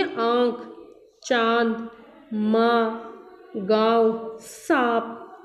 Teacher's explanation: अनुनासिक का उच्चारण नाक और मुंह से किया जाता है।